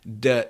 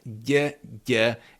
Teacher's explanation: D is front. Ď is more at the back.